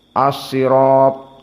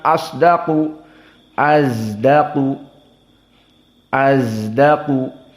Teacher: Makna al-ismam adalah dibaca seperti zai, antara sod dengan zai